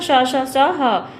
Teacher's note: इनकी संख्या चार है। श ह घर्षण अर्थात रगड़ के साथ उच्चारण होने से इन्हें उष्म व्यंजन कहते हैं।